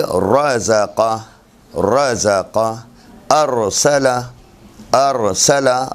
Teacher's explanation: خوب، مفتوح راہ اور وہ ساکن راہ جس کا ما قبل مفتوح ہو ہمیشہ تفخیم سے، تفخیم یعنی منہ بھر کے پڑھا جاتا ہے۔ مفتوح را اور وہ ساکن را جس کا ما قبل مفتوح ہو، یعنی را ساکن آئی اس سے پہلے والے حرف کے اوپر زبر ہو، اسے ہمیشہ تفخیم یعنی منہ بھر کے پڑھا جاتا ہے